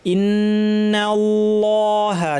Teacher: নাল্লাহা বলার সময় আল্লাহের লাম ভারী, কিন্তু নুন যেন পাতলা থাকে